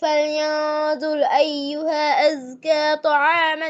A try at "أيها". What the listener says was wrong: মাদ skip করা যাবে না, ফালিয়ানজুর আইয়ুহা, মাদ পূর্ণ করেন। ফালিয়ানজুর আইয়ুহা আজকা।